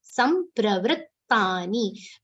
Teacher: Sa is followed by half ma, half pa and a complete ra.